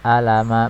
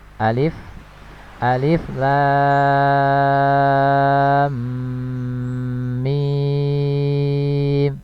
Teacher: dibaca 6 harokat ya, kecuali alif. Alif ini tidak ada hukum mad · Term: mad lazim harfi musaqqal